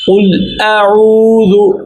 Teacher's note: قل اعوذ برب الناس، لام پر جزم ہے اس لیے یہاں پر کسی قسم کا کلکلہ نہیں ہوگا، بالکل سکون ہوگا۔ اب حمزہ پر زبر ہے، حمزہ پر تھوڑا سا جھٹکا دیں گے، اور اس کی جھٹکا اس کی اپنی خصوصیت کی وجہ سے، اس کی حرکت کی وجہ سے نہیں ہے۔